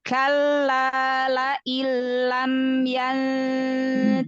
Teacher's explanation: Idgham ke huruf lam tanpa guna, tanpa dengung. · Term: Idgham bilaguna